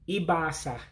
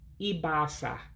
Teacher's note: it's kind of like contracting two words into one and when you do that you drop some letters in this case you drop the a